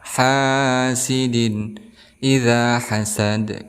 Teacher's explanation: Ada huruf mad tabi'i yaitu alif sebelumnya berharokat fathah. Hasidin izhar halki karena ada kasrah tain bertemu dengan hamzah, maka dibaca izhar